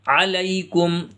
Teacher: یا ساکن سے پہلے حرف کے اوپر زبر آتا ہے تو اسے یا لین کہتے ہیں، اور یا لین کو جلدی پڑھتے ہیں۔